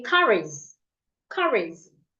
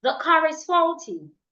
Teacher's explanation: I would have to say them together, link them up, and read them like one word.